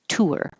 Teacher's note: if I round my lips there will be an invisible W